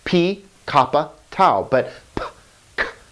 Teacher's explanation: the unvoiced letters are p and t these are unvoiced they they just make sort of popping sounds